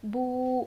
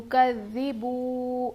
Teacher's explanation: واو ساکن سے پہلے پیش حرف مدہ تھوڑا کھینچ کر پڑھیں گے، بو، با واو پیش بو، تو کذبو۔